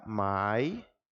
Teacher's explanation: Quando eu falo mai é o encontro de vogais que não se separa. E por conta disso, é um ditongo. Mas vejam que é um som criado unicamente na boca, não faz o uso do nariz, não é um som nasalizado.